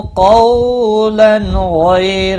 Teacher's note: تنوین کے بعد حروف حلقی کا غائن آیا ہے، اظہار حلقی ہوگا۔ غی یا لین ہے، را زبر کی وجہ سے پر پڑھا جائے گا۔